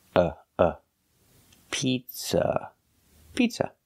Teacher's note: the second vowel uhuh is a short sound like cup and up not an open Sound